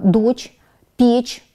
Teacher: Ведь мы с вами знаем что звук ч всегда мягкий